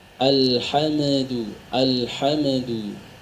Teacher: Itu kesalahan umum yang sering terjadi, membaca huruf mim yang sukun dibaca memantul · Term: Qalqalah